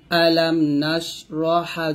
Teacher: আলাম নাশরাহ লাকা সাদরাক হামজা জবর আলাম মিম জবর লাম আলাম নুন শিন জবর নাশ এখানে বাতাস বের করবেন আলাম নাশ রহা জবর রহ এখানে হামস বাতাস বের করবেন